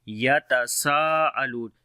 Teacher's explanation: Sin we long due to big mad sign which is on the alif, which is on the madda letter, which is alif here, and after the madda letter the hamza is coming in the same word. So this is big mad which is called madde muttasil. So we long almost 4 to 5 seconds.